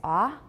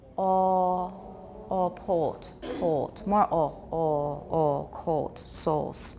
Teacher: So the in American it's ah, but in British, oh, port, more oh